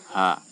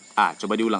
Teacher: Jadi kalau kita mengucapkan H, nah H itu keluar dari tenggorokan yang paling dalam. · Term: huruf H